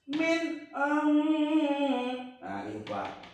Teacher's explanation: Jelas nunnya dan jangan berdengung. Jangan dibaca min. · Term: idhar